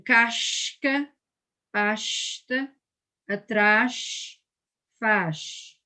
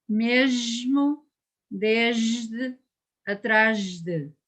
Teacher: So you write an S or a Z, but you read sh or j. You read it palatal.